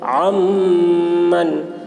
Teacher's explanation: اس لیے عین کو میم سے ملا کر غنہ کے ساتھ پڑھیں گے، اس کو ادغام ناقص کہتے ہیں۔